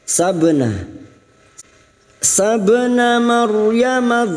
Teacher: ra sukun yang mati didahului fathah namanya ra tafkim, ra yang dibaca tebal